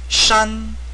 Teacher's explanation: the Chinese pronunciation of this character is actually shan, the first tone